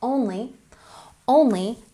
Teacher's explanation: put the emphasis on the first syllable